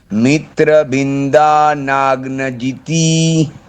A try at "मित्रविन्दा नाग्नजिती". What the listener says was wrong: हाँ नाग्नजीति करके ती को दीर्घ करना